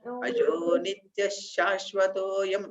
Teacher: ఆ నిత్యః విసర్గ చదవకూడదు అజో నిత్య శాశ్వతోయం పురాణః చదవాలి విసర్గ చదవకూడదు అక్కడ సరేనా అజో నిత్య